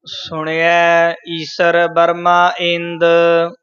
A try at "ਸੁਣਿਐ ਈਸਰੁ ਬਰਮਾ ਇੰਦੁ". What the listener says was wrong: ਇਹ ਈਸਰ ਨਹੀਂ ਬੋਲਣਾ ਸਸਾ ਨਹੀਂ ਲਾ ਦੇਣਾ ਈਸਰ ਬਰਮਾ ਥੋੜਾ ਜਿਹਾ ਭਾਰਾ ਬੋਲਣਾ ਬਰਮਾ ਨੀ ਬੋਲਣਾ